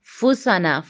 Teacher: फुसाना, फासाना या फूसाना नहीं, ठीक है। फूसाना, फा के ऊपर पेश है, होंठ अच्छे से गोल होंगे